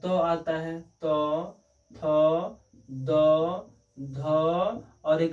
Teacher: तो ये जो लास्ट वाला न है ना, यही नासिका में उच्चारण होता है।